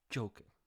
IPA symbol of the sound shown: dʒ